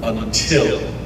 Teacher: an unstressed syllable followed by a stressed syllable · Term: iamb